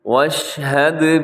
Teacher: یہاں واشہد دال ساکن ہے تو دال حروف قلقلہ میں ہے، یہاں قلقلہ کیجیے گا